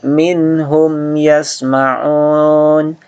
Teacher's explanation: Jadi mim sukunnya dibaca izhar, tidak perlu didengungkan.